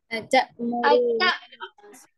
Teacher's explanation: اتا کھینچیں گے نہیں, اتا جھٹکا دیں گے حمزہ یہاں پہ